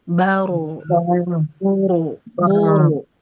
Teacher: bar, bir, bur, Jadi Bu, yang tebal ketika sukun, dia ujungnya tidak senyum, tidak tuh, tidak begitu, tapi dia bulat mulutnya